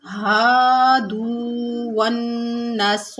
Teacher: ہادو والنصارى، ون میں نون جو ہے اس کے اوپر تشدید ہے، سختی اور جماؤ کے ساتھ پڑھیں گے